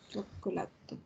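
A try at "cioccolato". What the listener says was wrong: Chocolato, no, sin el to final. No es chocolato. Chocolato. ¿Por qué sin querer le agregas esa pausita al final? Por el cántico con el que un poco nos imitamos a los italianos.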